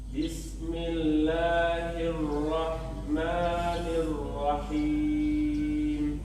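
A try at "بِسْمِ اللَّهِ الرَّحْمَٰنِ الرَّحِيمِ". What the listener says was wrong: Coba jangan buru-buru di sinnya, di bismillah itu. Karena pengen cepat-cepat membaca mi.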